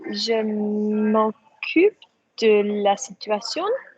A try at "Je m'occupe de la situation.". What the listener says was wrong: Yes, it was, but it sounded slow and it didn't sound human. Make it sound French, normal and human.